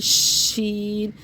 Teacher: मुंह में आवाज फैलेगी शी शीन यानी के तफशी होगी अब मुंह यानी मुंह में आवाज का फैलना शीन जैसे बच्चों को खामोश कराते हैं।